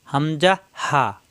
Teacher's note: আরবি হরফ 29 টি মাখরাজ 17 টি এক নাম্বার মাখরাজ হলকের শুরু হইতে শক্ত করে উচ্চারিত হয়